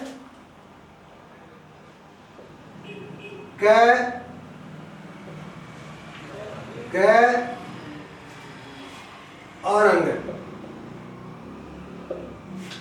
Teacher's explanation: वे वर्ण जिनका उच्चारण करते समय प्राणवायु कम मात्रा में बाहर निकलती है उनको हम अल्प प्राण वर्ण कहते हैं।